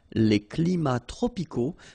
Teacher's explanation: even if we've got the plural form here, S, we don't pronounce the S, and then we don't pronounce the T either